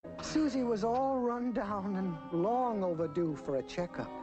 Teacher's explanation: So when used as a verb, we'll stress the particle, the preposition, run down, all run down.